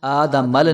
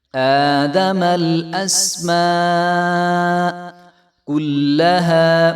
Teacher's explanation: حمزہ کھڑا زبر اور میم کو جب ہم لام کے ساتھ ملائیں گے تو لام کو ہلانا نہیں ہے، مثلا آدمل نہیں کریں گے، اس کو آدمل الاسماء، تو اس کو ہلانا بالکل بھی نہیں ہے۔